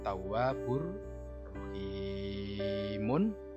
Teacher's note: Tawwabun ketemu ro, ro-nya ditandai tasydid. Ini adalah idgham bila gunnah, yaitu memasukkan huruf berikutnya tapi dengan tidak mendengung.